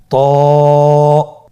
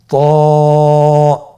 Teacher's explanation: জিহ্বার আগা সামনের উপরের দুই দাঁতের গোড়ার সঙ্গে লাগিয়ে উচ্চারিত হয়। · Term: মোটা হারাফ